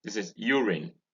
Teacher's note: this is urine with stress on the first syllable